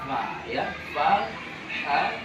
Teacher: Hurufnya itu dibaca dengan suara lemah, ya, suara lemah dan nafas mengalir. Itu pengertian dari hams, suara lemah.